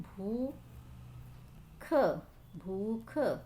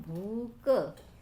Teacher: ख का क्या हो गया है, क हो गया है, तो ये क्या है, अल्प प्राणीकरण। व्यंजनों का क्या हो गया है, अल्प प्राणीकरण हो गया है।